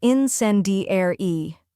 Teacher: Next is sen, which rhymes with pen and is stressed.